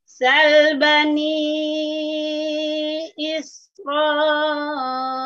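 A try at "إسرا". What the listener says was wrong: Jangan is. Mungkin karena ibu menghentak isro, jangan isro seperti terpotong kalau gitu. Jangan dihentak. Isro, jangan isro. Nah, kalau begitu seperti dipotong ibu. Jangan dihentak ya, biasa aja, lunakkan aja.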